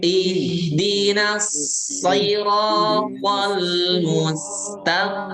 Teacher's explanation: Nah, ini 3 huruf yang tebal berurutan. Huruf H-nya dialirkan ya, suara dan angin. Lihat. Ihdinas siratal mustaqim.